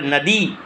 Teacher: नदी में द पर ज़्यादा बल पड़ता है, यानी दीर्घ ई है, तो न अ द ई, तो नदी दीर्घ ईकारांत।